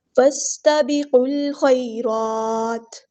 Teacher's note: مولیہا فاستبقوا الخیرات، فا کو ہم نے سین کے ساتھ ملا دینا ہے، حمزۃ الوصل ہمارا ڈراپ ہو جائے گا، سین کی سیٹی ہم نے واضح کرنی ہے، سین باریک پڑھنا ہے، اور قاف ہمارا ہیبیٹر ہے، پورا ادا کریں گے، قاف کو ہم نے لام کے ساتھ ملا دینا ہے، حمزۃ الوصل ہمارا ڈراپ ہو جائے گا.